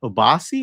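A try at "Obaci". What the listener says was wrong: Obasha. I thought it was pronounced Obasha, but it might not be. I think the C is pronounced like a Shah.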